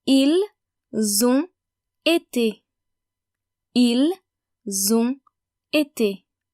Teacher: we pronounce the N of on and the S of nous, vous, il and elle